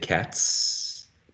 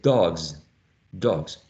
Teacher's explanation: this last sound in the first case is is voiceless whereas in the second case is voiced · voiceless and uh G if you remember it is voiced so T is voiceless just like s is voiceless as well G is voiced just like Z is